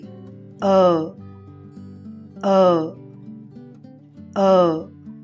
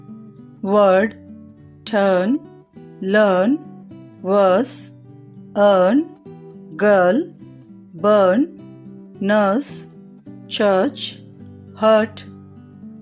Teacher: తర్వాత లాంగ్ వొవెల్స్లో మూడవది అ అ అ. దీనిని పలికేటప్పుడు పెదాలు గుండ్రంగా లేని స్థితిలో ఉండి నాలుక కొద్దిగా తెరచి ఉంటుంది. వోకల్ ట్రాక్ట్ యొక్క మధ్య భాగంలో వ్యక్తీకరించబడుతుంది.